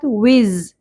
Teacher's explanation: زا میں سیٹی کی آواز ہوگی شدت کے ساتھ